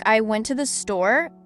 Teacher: in a sentence like I went to the store the word store is stressed